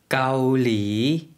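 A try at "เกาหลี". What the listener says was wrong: 앞에는 평성이고요. 뒤에 사성으로 내렸다가 올려주시면 돼요. 한국 분들이 많이 발음하실 때 까올리 이렇게 많이 발음하시는 경우가 많은데요. 앞에 평성 좀 신경 써서 해주시고요. 까올리 이렇게 발음해 주시면 되겠습니다.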